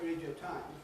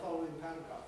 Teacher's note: it's losing a syllable or losing a sound by changing something from a vowel into a semivowel, into a W, an E into a Y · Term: compression